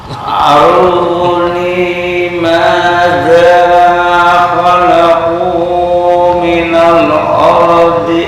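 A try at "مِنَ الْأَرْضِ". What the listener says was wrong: Bukan of, bukan tafkhim. Ini A-nya tarkik, cuma ro-nya tafkhim. Ardi, bukan of. Nah, ardi. Minal ardi, a, bukan o.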